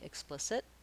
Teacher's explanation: You might notice that we don't really say an aspirated T here. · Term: stopped T